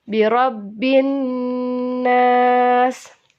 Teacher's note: Dan yang bergaris warna biru itu termasuk kepada huruf hukum alif lam syamsiyah, dan nun tasydidnya itu ialah gunnah, jadi harus ditahan